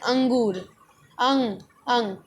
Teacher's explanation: जैसे हम बोल रहे हैं अंगूर, अंग, अंग, हमारा नाक से जो स्वर है वो निकल रहा है, ठीक है, उच्चारण नाक से हो रहा है, अंगूर। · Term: अनुस्वार